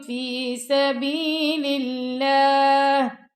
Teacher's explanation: اللہ کی لام کو باریک پڑھنا ہے